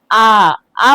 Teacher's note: विवृत स्वर होता है जिसके उच्चारण मुंह जो है हमारा पूरा खुलता है, जैसे आ बोलने पे क्या हो रहा है, हमारा मुंह जो है पूरा खुल जा रहा है।